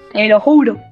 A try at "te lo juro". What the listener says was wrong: Julo no, juro, con R.